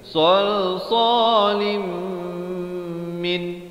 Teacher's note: idgham bi gunnah tanwin bertemu mim